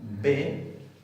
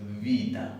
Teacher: Era bilabial, sonora plosiva, B, pero ahora es labio dental, sonora fricativa.